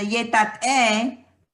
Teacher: it has that glottal and an epsilon E